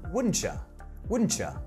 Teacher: Wouldn't you gets reduced down to wouldn't ya?